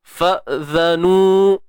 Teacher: Huruf zal jangan lupa keluar hujung lidah sikit je.